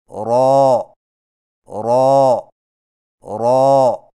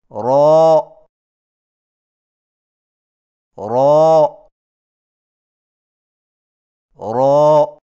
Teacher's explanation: را کی ادائیگی میں زبان کی نوک کی پشت کو اوپر والے دانتوں کے مسوڑوں سے لگا کر موٹی آواز میں پڑھیں